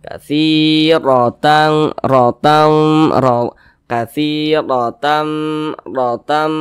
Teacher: huruf ro dibaca tebal dibaca tabkhim sehingga pangkal lisan kita itu naik terangkat ke atas ketika Kita mengucapkannya katsirotan RAM ro katiram ram seperti itu kita tebalkan huruf rnya